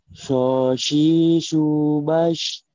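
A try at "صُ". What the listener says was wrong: Belum, itu belum naikin pangkal lidah.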